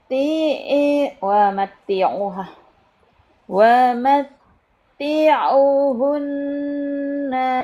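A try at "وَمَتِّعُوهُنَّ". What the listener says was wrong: U-nya panjang, Bu. U-nya panjang.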